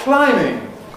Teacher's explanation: that [b] hasn’t been pronounced in ‘core English’, ‘mainstream English’ for many many centuries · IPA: /ˈklaɪmɪŋ/